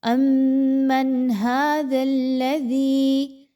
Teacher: نون ساکن کے بعد ہا کا حرف ہے تو یہاں پر آپ نے اظہار کرنا ہے، بالکل بھی غنہ نہیں ہونا چاہیے